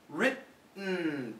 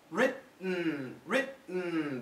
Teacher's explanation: Don't move the tongue. Written. Written. The tongue stays there. That's the glottal stop sound. That's the easiest way to make the glottal stop sound.